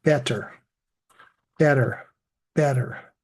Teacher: often that erer sound is not so strongly sounded